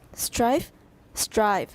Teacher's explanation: of difference in the invalid occurs before voiceless and voice fricatives the vowel is shorter in the first word of each of the pairs